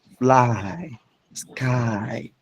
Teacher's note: These two vowels in fly you start with a and end on e. So it's a glide from a to fly.